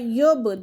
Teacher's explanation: با کے پر بھی کلکلا ہو رہا ہے